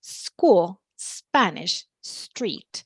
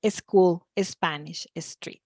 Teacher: begins with an S followed by a consonant uh like Spanish something that gives us away a lot of times is adding the a sound at the beginning